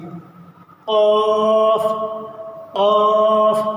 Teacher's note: बिल्कुल साफ आवाज़ के साथ, इसके अंदर खा की आवाज़ नहीं आना चाहिए। ये काफ है, बिल्कुल नॉर्मली बाहर से निकलेगा।